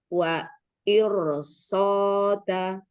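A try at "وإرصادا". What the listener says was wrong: Danya sama panjang dengan so.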